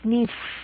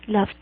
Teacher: ese ed va a sonar como el sonido de la t